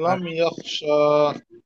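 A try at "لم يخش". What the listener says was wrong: টান হবে না, লাম ইয়াখশা।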